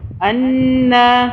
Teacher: نون کو تھوڑا سا ناک میں رکھیں گے اور 2 سیکنڈ کے لیے رکھیں گے ، تشدید ہے نون کے اوپر، اس لیے انا، ایک الف · لیے رکھیں گے، تشدید ہے نون کے اوپر، اس لیے انا، ایک الف کے برابر کھڑی زبر کو کھینچا